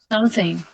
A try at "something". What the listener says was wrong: Yeah, close, but you need to make it lighter than this.